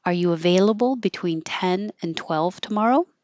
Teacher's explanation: It's a yes no question, so it'll keep going up.